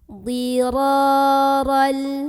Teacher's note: Karena ada alif yang sebelumnya didahului huruf yang berbaris fathah. Maka cara membaca huruf ra-nya kita panjangkan sepanjang 2 harokat saja. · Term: mad tabi'i